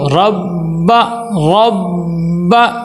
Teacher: را کو موٹا کر کے پر کر کے پڑھیں گے، · را کو با کے ساتھ ملائیں گے اور با کے اوپر ٹھہراؤ سختی ہو.